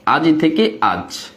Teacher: এই যে শেষে স্বরবর্ণ, শেষে স্বরধ্বনি, এই শেষের স্বরধ্বনিটা লোপ হয়ে গেছে, লোপ মানে উদাও হয়ে গেছে। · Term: অন্তঃস্বর লোপ